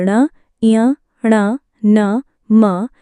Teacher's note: प्रत्येक वर्ग का अंतिम यानी पांचवा वर्ण यानी ण, ञ, ण, न, म नासिक्य व्यंजन कहलाता है। इनके उच्चारण में हवा नाक से बाहर निकलती है। नासिक्य व्यंजन को अनुनासिक व्यंजन भी कहते हैं। · नासिक्य व्यंजन वे होते हैं जिनका उच्चारण मुख और नासिका यानी नाक से होता है।